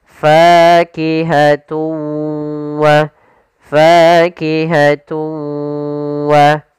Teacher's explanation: suara tanwinnya kita masukkan langsung ke huruf waw dan kemudian kita tahan gunnahnya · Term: idgham bi gunnah